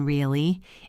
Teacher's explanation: Really if I say it with a falling tone really it means I believe you or I agree. If I say it with a rising tone really it means I am surprised or doubtful. If I say it flat really it might sound sarcastic.